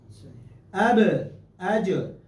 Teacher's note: قلقلہ کرنے کے بعد بھی آواز جاری نہیں رہتی، وہ ساری کی ساری آواز ایک جھٹکے میں منہ سے نکل جاتی۔ اب پھر بھی اس کو آپ کنٹینیو نہیں رکھ سکتے۔